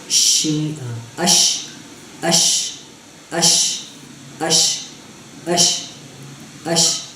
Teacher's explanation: جب شین اور یا جب ہم پڑھتے ہیں تو اس وقت وہ زبان کی نوک کے ساتھ اوپر والا جو تالو اس کے ساتھ لگتی نہیں ہے، لیکن بالکل اس کے قریب ہو جاتی ہے.